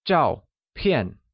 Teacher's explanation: both zhao and pian are pronounced with a falling tone